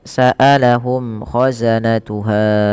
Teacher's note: mim mati bertemu k ada izhar syafawi dibaca dengan jelas suara mimnya